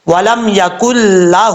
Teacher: ہا کے اوپر الٹا پیش ہے، ایک الف کی مقدار اس کو لمبا کر کے پڑھا جائے گا